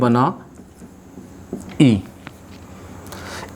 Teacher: ई और ई तालव्य से बोली जाती है।